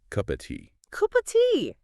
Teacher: the word of itself often gets reduced to just a very weak uh sound or sometimes it almost disappears